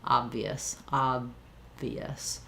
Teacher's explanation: If I'm saying obvious, my lips are already, my lower lip is already touching my upper teeth, so that I'm ready to just release right into the V from the B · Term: B-V combination